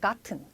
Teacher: 미국식 영어에서는 약간 우리가 이런 식으로 발음하는 거를 좀 들어보셨을 거예요. 근데 영국식 영어에서는 약간 gotten 이런 식으로 T를 그대로 살려주는 경우가 많죠.